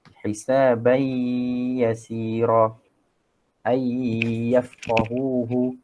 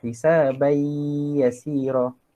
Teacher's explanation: Tuzhiru fihi al-gunnah, dijelaskan dengungnya dengan kadar 2 harakat. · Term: idgham bi gunnah